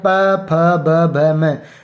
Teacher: जब इनको हम पढ़ते हैं तो हमारे होठ है वो आपस में टकराते हैं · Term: ओष्ठ